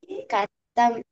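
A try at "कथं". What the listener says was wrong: Katham Let the Mahaprana come.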